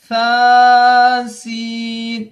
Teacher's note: با سین، یا سین، نون سین، تا سین، سا سین۔ سا کو پڑھتے وقت زبان کی نوک کو اوپر والے دانتوں کے کنارے سے لگا کے چھوڑ دیں گے، یہ حرف منہ سے ہوا نکلے گی، ہوا کے ساتھ میں اس کی ادائیگی ہوگی، اس کی آواز نکلے گی۔